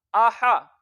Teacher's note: हमजा और हा के ऊपर जबर है, दोनों मुंह और आवाज खोल के पढ़ेंगे और इनको लंबा नहीं करेंगे। हमजा जबर आ, हा जबर हा, आहा।